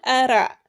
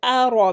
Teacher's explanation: not أرى but أرى because ra is a thick letter